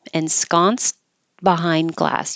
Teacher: You won't hear the T at all. You just put your tongue in the T position. So I need to put that little mark there, which reminds you don't say T.